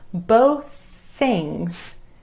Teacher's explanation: need some more coffee both things both things becomes both things that ending th I'm just holding that sound and releasing it into the next word